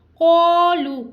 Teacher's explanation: قولو قوف حروف مستعلیہ اس کو پور پڑھیں گے